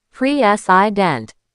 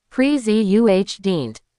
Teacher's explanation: that middle i and the final e just vanish. They become schwas.